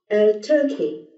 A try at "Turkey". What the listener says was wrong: Turkey. Yes. Okay. Yeah. Perfect.